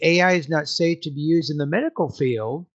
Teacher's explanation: at the end of a non-final thought group, your tone should maybe go up slightly, not down.